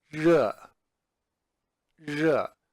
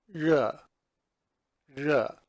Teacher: it's not quite like the English R. The tongue is placed against the top of the palate a little bit further back.